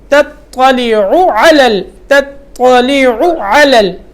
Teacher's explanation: عین کو لمبا نہیں کرنا